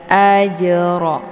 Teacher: sukun yang terdapat di pertengahan kalimat ini dinamakan dengan Qalqalah Sugra cara bacanya huruf jimnya dipantulkan dengan pantulan ringan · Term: qalqalah sughra